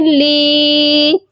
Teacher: لام کو ایک الف کے برابر لمبا کریں گے کیونکہ لام کے ساتھ یا ہے